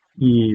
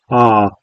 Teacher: the mouth is more closed for E and more open for Ah. The jaw is more open or closed.